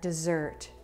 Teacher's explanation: dessert has stress on the second syllable